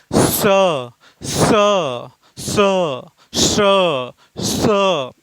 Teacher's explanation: जब आप लोग उच्चारित कर रहे हैं तो मुख से गर्म हवा निकल रही है और हल्की सीटी की आवाज आ रही है। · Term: ऊष्मक व्यंजन, उष्मक व्यंजन